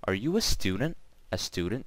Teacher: how the end intonation changed and word stress was on student